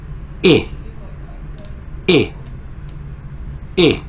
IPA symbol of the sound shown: ɪ